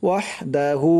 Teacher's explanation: আশহাদু আল্লাহ ইলাহা ইল্লাল্লাহু ওয়াহদাহু, ওয়াও দিয়ে হা ধরবে, ওয়াহদাহু, হার উপরে উল্টা পেশ 1 আলিফ টান দিতে হবে